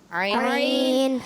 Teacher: عین جو ہے حلق کے بیچ والے حصے سے ادا ہوگا